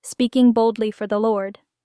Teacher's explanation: and L smoothly boldly no big pause between D and L put strong emphasis on boldly speaking boldly for the Lord then lower your pitch for the Lord